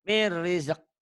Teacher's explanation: nun mati atau tanwin ketemu ro. Idgham bila gunnah. Dimasukkan, diidghamkan tanpa bingung, tanpa ditahan.